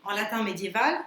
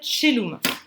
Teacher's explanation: Parce qu'au Moyen-Âge, ces diphtongues ae, quand latin reconstitué, on prononce ae, on les prononçait che. Donc le caelum, en latin médiéval, ça va se dire celum.